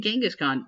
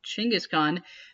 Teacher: take away the G sound and replace it with the Ch sound, and you have a more correct name.